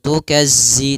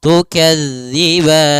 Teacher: Di sini jangan dibaca dengan za, jangan tukazzi tapi tukadziban. Panjang ban boleh 2 harakat, boleh 4 harakat dan boleh pula 6 harakat karena dia mad arid lis sukun.